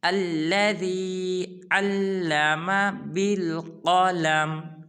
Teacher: قاف کو پر ادا کریں گے